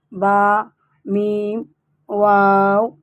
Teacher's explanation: واو، با، میم، دونوں ہونٹوں کے آخری حصے سے، دونوں ہونٹوں سے 3 حرف کا مخرج ہے